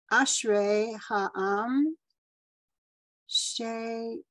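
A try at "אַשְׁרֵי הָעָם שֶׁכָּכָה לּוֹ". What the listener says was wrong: That's supposed to be two ah vowels. It got cut off.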